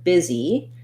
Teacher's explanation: we have first syllable stress. The biz syllable is longer.